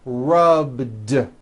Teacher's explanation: All I did was add a voiced D sound at the end. Rubbed. It's not rubbed with an unvoiced T.